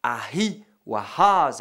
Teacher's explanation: le plus souvent ce sera Ahi ou Ahaz avec simplement un H aspiré. Tout peut dépendre aussi de la lettre qui suit.